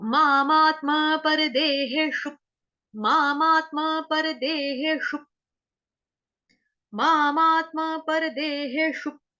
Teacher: मामा के ऊपर आघात आ जाएगा आधे त का, ये जो त है ये आपने मामा के साथ जोड़ना है